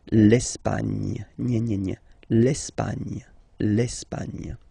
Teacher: don't insist on the final E because basically it's not pronounced. L'Espagne.